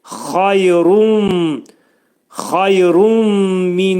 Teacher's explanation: Burada xayrunda burda ra hərfinin üstündə olan tənvin dammada olan nun səsi mimə dəyir. İdğam məğununə olacaq. Yəni nun səsi mimə çevrilir.